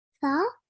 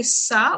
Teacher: So you didn't say sa, which is a S sound. You said tha, which is when your tongue touches the top of your teeth gently, okay? Slight air comes out.